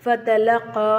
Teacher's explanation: காஃப் வந்து நாவின் கடைசி பகுதி மேல் முரசோடு இணையும் போது சொல்லணும்